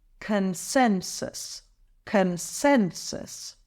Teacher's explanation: a consensus it's pronounced as consensus here's the breakdown con sensus emphasize the second syllable